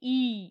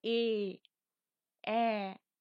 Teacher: মুখ বড় করে হাঁ হচ্ছে এবং ওষ্ঠ ও অধরের প্রান্ত ভাগটা কানের দিকে পৌঁছে যাচ্ছে। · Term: প্রসারিত